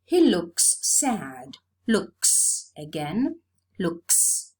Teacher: it's realized as a voiceless sound because the previous sound is voiceless